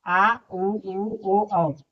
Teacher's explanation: आ, उ, ओ, औ। ये भी पांच होते हैं जो कि हमारे जीभ के पिछले हिस्से से बोले जाते हैं।